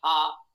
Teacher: अब अंतिम वर्ण है हा। ये कंठ स्थानीय है